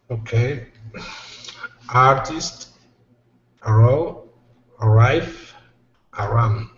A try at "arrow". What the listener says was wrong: Very good. This is arrow, not a row. Arrow.